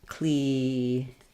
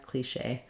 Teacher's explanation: So in cliche, we have the first letter C saying the K sound, letter I saying the E sound, letters CH saying the SH sound, so we'll see that symbol there, and then we have the A diphthong, so I would write that like cliche, stressed on the second syllable. In French, they put accent mark to show that you're going to have your stress there, cliche.